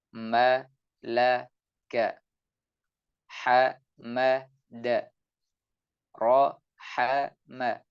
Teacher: huruf ba dan huruf mim setelahnya ini dengan menyentuhkan dua bibir dengan menempelkan kedua bibir disertai dengan suara atau ya dengung yang terucap dari rongga hidung